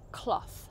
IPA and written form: klɒθ (cloth)